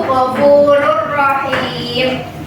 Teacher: dengan mentasydidkan ke dalam salah satu huruf idgham dengan suara yang tidak mendengung. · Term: idgham bilahuna